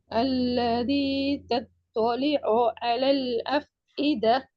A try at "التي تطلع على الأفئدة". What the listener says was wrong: அல்லதி அல்ல, அல்லதி. தீய உச்சரிங்க. சின்னத்தே பெரிய பா ரெண்டும் வரணும் மூணாவதுல. ஏன்னா அல்லதி التي أو تلتار ஆக்கு போகக்கூடாது.